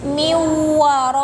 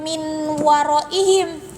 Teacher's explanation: Miwaraihim, bukan min waraihim, tapi si nunnya itu diasupkeun karena huruf wawu sehingga si nun atau tanwinna si enna eta teh henteu kabaca gitu ya. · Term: idgham